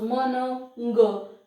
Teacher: they are the nasal consonants, because the air is going outside, is released through the nasal passage